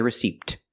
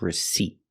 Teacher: And also remember the P is silent. Don't pronounce that P.